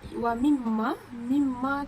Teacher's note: Sebab mim bertanda tasydid dan cara mim tu bertanda tasydid dan cara membacanya adalah dengan dengung serta ditahan 3 harakat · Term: gunnah